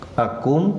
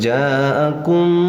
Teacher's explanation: Akum, nah mim mati bertemu ro dinamakan idhar syafawi. Idhar itu jelas, syafawi itu yang diucapkannya dengan bibir. Bacanya tidak boleh ditekankan apalagi didengungkan ya. Tidak boleh ja'akum, tidak boleh ya.